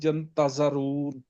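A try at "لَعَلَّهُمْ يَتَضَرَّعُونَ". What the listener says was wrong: یتضرعون، نہیں نہیں ین نہیں ہے نا، یتضرعون.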